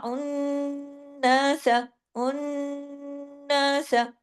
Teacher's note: نون پہ تشدید ہے، ڈبل نون ہے، آواز دیر تک ناک میں چھپی، لیکن سین کو سین زبر سا، اس کو لمبا نہیں کرنا، ٹھیک ہے۔ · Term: اکمل غنہ